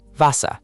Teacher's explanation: The end R melts into a.